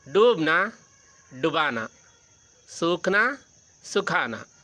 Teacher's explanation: ಎರಡರಲ್ಲೂ ಕೂಡ ಪ್ರಾರಂಭದಲ್ಲಿ ದೀರ್ಘಾಕ್ಷರ ಬಂದಿದೆ ಕ್ರಿಯಾಪದದಲ್ಲಿ ಅದು ಪ್ರಥಮ ಪ್ರೇರಣಾರ್ಥಕದಲ್ಲಿ ರಸ್ವಾಕ್ಷರವಾಗಿದೆ